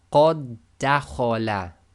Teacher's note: So the first word here is qad, and the next one is actually dakhala. However, because the two dals effectively come together when you do your recitation, we completely ignore the first dal. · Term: merging